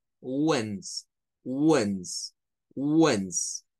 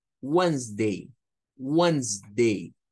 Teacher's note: Solo van a sonar a wens. O sea, es como que solo suene la W, la E como una E, la N y la Z